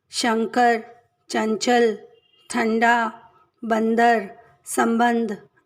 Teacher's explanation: इन्हें अयोगवाह कहते हैं। पहला अंग, इसका उच्चारण नाक से होता है, इसे अनुस्वार कहते हैं।